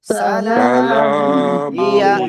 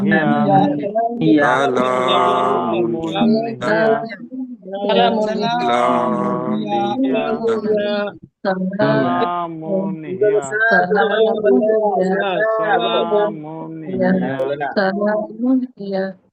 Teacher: সিন জবর সা, লাম আলিফ জবর লা, সালা, মিম দুই পেশ মুন, সালামুন। এই যে তানবিনের পরে ইজহারের অক্ষর হা আসছে, আমরা স্পষ্ট করে পড়বো সালামুন, হাজির হি ইয়া জবর ইয়া, হিয়া, সালামুন হিয়া।